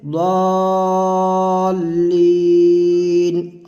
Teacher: ज़्वा को जब पढ़ेंगे लंबा करके खींच करके 3 4 5 अलिफ तक हम खींच करके पढ़ेंगे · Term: मद्दे लाजिम